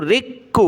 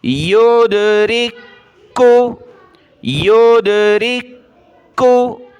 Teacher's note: را کاف زیر رک، کاف پیش کو، رک کو. کاف کو سخت کریں گے کیونکہ تشدید ہے.